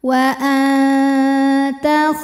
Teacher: ta disertai ada bunyi dengung juga suara masuk hidung ya Nah karena Ta ini makhrajnya dekat dengan Nun maka suara dengungnya sedikit aliran suara yang keluar dari mulut masih banyak · menyentuh pangkal gigi seri atas makhraj dari huruf ta disertai ada bunyi dengung juga suara masuk hidung ya Nah karena · tingkatan dengung aqrab ikhfa aqrab sebab nun sukun menghadapi huruf taa cara membaca Nun sukunnya adalah disamarkan ke makhraj huruf depannya yaitu ke ta jadi kita siap-siap sudah mau Mau menyentuh pangkal gigi seri atas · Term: ikhfa Hakiki